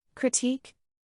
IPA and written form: krɪˈtik (Critique)